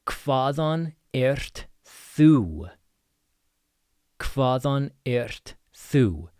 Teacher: So again, we have HV, sounds like KV. You have an eth in the middle, so a voiced TH.